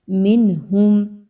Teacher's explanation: نون ساکن کے بعد ہا کا حرف آ رہا ہے جو کہ حروف حلقی کے لیٹرز میں سے ہے، اس لیے یہاں پر نون کی آواز کو بڑا کلیئر کر کے پڑھا جائے گا، چھپایا نہیں جائے گا، مدغم نہیں کیا جائے گا